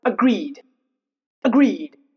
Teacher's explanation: The emphasis is in greed but not in a a sound.